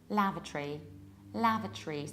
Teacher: we skip O, we reduce it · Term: British accent